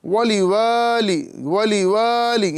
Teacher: واو کے بعد الف ہے، یعنی الف مدہ ہو رہا ہے، ایک الف کے برابر کھینچ کے پڑھیں گے